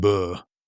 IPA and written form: bɜː (Bear)